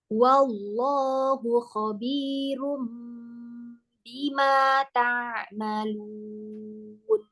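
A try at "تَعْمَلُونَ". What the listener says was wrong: Nah, di sini sekarang ainnya nih muskilah lagi. Ta'malun. Ta'malun. Nanti ke hidung. Fokus suaranya di bawah. Fokus suaranya di bawah.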